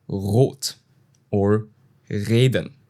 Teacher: Okay, for example, in R or R, it's very different from the English R. In standard German, you make the R at the back of the throat and at the start of a word, you usually pronounce it a bit more. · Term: German R